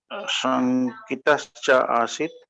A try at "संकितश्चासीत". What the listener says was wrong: नहीं, एक साथ बोलिए, संकितश्चासीत। ना, संकितश्चासीत। हाँ, एक साथ बोलेंगे ना, संकितश्च आसीत, संकितश्चासीत।